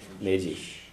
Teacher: the D and the S are both slender, so they have a jif sound and a sh sound.